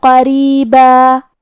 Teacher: حرف القاف کی ادائیگی زبان کے جڑ اور تالو کے نرم حصے سے ہے. قاف حروف تفخیم میں سے بھی ہے، تو ہم یہ حرف کو موٹی آواز میں پڑھیں گے.